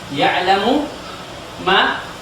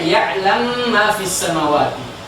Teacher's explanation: dia matikan huruf mim yang pertama, ya, kemudian memasukkan langsung ke huruf yang kedua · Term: idgham kabir